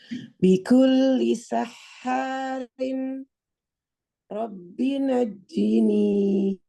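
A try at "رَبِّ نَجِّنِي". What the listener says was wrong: Jangan buru-buru bak tasydidnya. Roknya terbalik.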